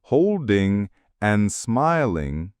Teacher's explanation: holding and smiling lose their G sounds too which is extremely common in casual speech